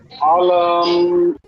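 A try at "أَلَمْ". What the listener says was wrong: হামজা টান হবে না। আলাম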